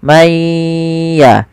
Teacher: Sambil ditahan suara gunnahnya.